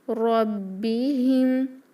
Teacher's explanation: إِلَىٰ رَبِّهِمْ، رو بھاری ہوگا، رو اس کو ربِّهِمْ نہ پڑھیں، لہن الخفی ہوگی اس لیے رو پڑھیں گے. رَبِّهِمْ، میم ساکن پر غنہ نہیں، اظہار شفوی کیونکہ اس کے بعد لیٹر یا آیا ہے.